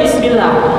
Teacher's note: tengah lidahnya naik ke atas ketika menyebutkan huruf yang berharokat kasroh. I itu pasti lidah tengahnya itu naik ke atas.